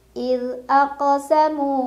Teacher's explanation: Ada qalqalah sugra karena ada huruf qalqalah yaitu qaf yang sukunnya sukun asli. Cara bacanya dipantulkan dan pantulannya kecil.